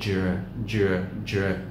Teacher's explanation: Cái nửa đằng sau là dr, dr. Cái âm d đi với âm r thì mình làm bật nó ra một chút.